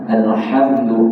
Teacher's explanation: huruf ha ni sifat dia paling besar adalah sifat hamas